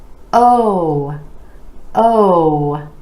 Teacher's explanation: you want to make sure those lips are really rounding out and stretch the sound give it a little more duration